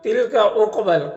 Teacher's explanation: قاف حروف مستعلیہ میں سے پر پڑھیں گے اور قاف میں قلقلہ کریں گے